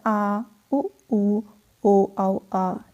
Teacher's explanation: जिन स्वरों के उच्चारण में जीभ का पश्च भाग यानी कि पीछे का जो भाग है वह यूज़ होता है, ठीक है। पीछे का भाग इस्तेमाल किया जाता है, उसको पश्च स्वर कहते हैं।